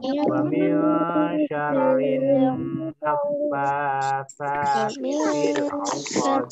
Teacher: Nun mati bertemu sin. Samar. Bacaan ikhfa, ya.